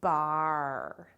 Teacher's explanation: And now it says R, R. I can hear the R at the end, and it changes the sound of my vowel just a little bit.